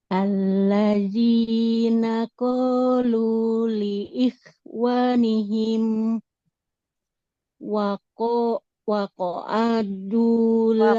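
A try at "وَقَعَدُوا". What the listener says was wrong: Waqa'adu. Ainnya juga nggak panjang. Waqa'adu.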